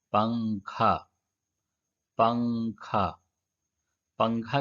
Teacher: نون کی آواز کو ناک میں چھپا کر پڑھنا چاہیے۔ نوک زبان تالو سے ہٹا کر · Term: اخفا